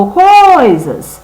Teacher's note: Olha aqui a palavra agora, coisas. Qual que eu falo mais forte? O coi, não é? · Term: sílaba tônica